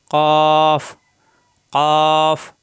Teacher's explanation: জিহ্বার গোড়া উপরের তালুর সঙ্গে লাগাইয়া মোটা আকারে উচ্চারিত হয়